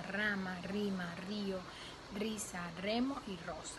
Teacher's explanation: la formación de dos o más oclusiones del ápice de la lengua contra los alveolos. Fonéticamente se transcribe por el símbolo 1. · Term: Vibrante múltiple